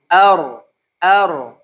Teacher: satu sampai dua getaran saja makanya tidak terlalu terlihat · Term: attakrir, at-takrir